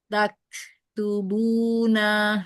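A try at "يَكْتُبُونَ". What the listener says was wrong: Huruf iya. Ya.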